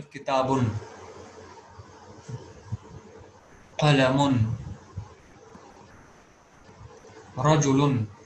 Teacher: The sound at the end of word having tanween will be like that of noon